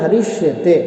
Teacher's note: जैसे उदाहरण है हरिष्यते, यहाँ पर हरिस धन शेते है, तो यहाँ हरिस का जो दंत सकार है वह तालव्य शकार के अंदर बदल जाएगा और उस संधि का नाम होगा ष्टुत्व संधि और सूत्र होगा स्तोहो श्चुनाश्चुः।